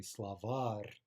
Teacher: it's actually slavar, right? Stress on the final syllable. And that helps us guess that there's at least a chance that this is an in-stress noun.